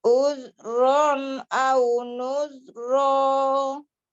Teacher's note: zalnya kurang rohwah namanya, kurang mengalir udah suaranya.